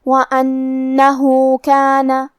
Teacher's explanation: کلمت وَأَنَّهُ کے آخری میں ہا پہ الٹا پیش ہے. یہاں بھی حکم ہے مد صلہ صغرا. ہم اپنی آواز 2 مد کے برابر لمبی کریں گے